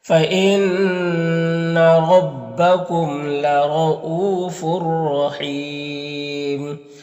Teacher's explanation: یہاں پر را کو پر زبر ہے، را کو پر پڑھیں گے، یہاں پر واو مدہ ہے، یہاں پر تنوین کے بعد را ہے حروف یرملون میں سے تو تنوین کو را سے ملا کر بغیر غنہ کے پڑھیں گے، اس کو ادغام تام کہتے ہیں۔ را مشددہ کے اوپر زبر ہے تو را کو پر پڑھیں گے، یہاں پر یا مدہ ہے، وقف کی صورت میں مد عارض وقفی ہوگا تو اس طرح سے پڑھیں گے۔